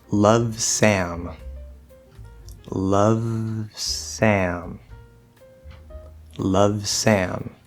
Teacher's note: we hear the V, we hear the S, and there's a clear separation between them. Even though there's not a stop in the sound, we clearly hear both sounds individually.